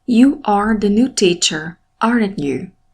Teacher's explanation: A minha voz se elevou no verbo, aren't, e se abaixou na última palavra, no sujeito, you.